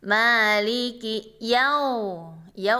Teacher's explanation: waw mati di sini sebelumnya fathah. Jadi wawnya dibaca lain atau lin. Itu lemah, berayun ya. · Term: mad lin